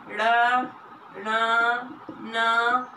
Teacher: ये बोलते हैं तो इसमें मुख और नाक दोनों से ध्वनि निकलती है, उसमें मुख इसको अनुनासिक कहते हैं।